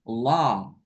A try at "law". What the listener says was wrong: Nggak pakai W. Law.